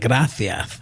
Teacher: they have a th sound for C sound. So, like, you know, gracias would be like gracias.